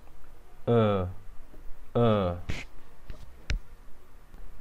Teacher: فهو يلفظ من سقف الحلق تقريبا